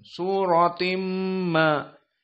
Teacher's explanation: tanwin bertemu dengan mim maka di sini idgam bigunah sutim keluar dari hidung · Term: idgham bi gunnah